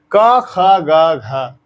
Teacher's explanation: तो क का उच्चारण स्थल कंठ से हो रहा है। इसका मतलब इस पूरे वर्ण का उच्चारण स्थल कंठ है।